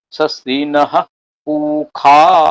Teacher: কিন্তু আমি দেখছি ঋগ্বেদীয় উচ্চারণ করছেন স্বস্তিনঃ উখা